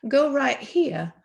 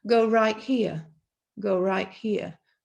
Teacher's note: So what happens here, if I'm speaking naturally, is I might say, go right here, and you will see that the t is not pronounced strongly. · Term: elision